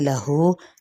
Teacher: فلن تجد لہ، نون پہ اخفاء حقیقی، تا کی زبر، جیم کی زیر اور دال کا زبر، ان کو لمبا نہیں کریں گے۔ لہو یہاں پہ مد سے بالواو کا قائم مقام ہے، الٹا پیش، یعنی اس کو ایک الف یا دو حرکت لمبا کریں گے